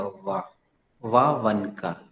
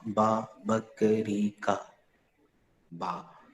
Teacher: When बेटा वा जो है और बा जो है उसमें बहुत अंतर है, पता है तुम्हें? वा तब सही निकलेगा जब नीचे वाला होंठ ऊपर वाले दांत से हल्का सा टच करेगा, तब वा निकलेगा।